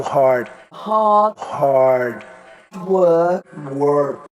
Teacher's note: in the words shared hard and work most Brits will not pronounce the R sound but most Americans will